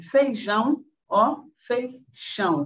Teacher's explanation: não vozeamento, e a produção de uma fricativa, no caso, surda, e sem o espalhamento, sem acompanhar a harmonização nasal